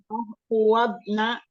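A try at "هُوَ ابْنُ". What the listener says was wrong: Nunnya harokatnya domah.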